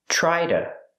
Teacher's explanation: To is pronounced duh. A fast D.